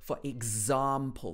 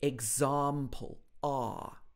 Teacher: this R sound is a very long vowel sound, characteristic of received pronunciation